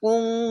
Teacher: এখানে ইকফা গুন্না বাংলা অনস্কার মতো হবে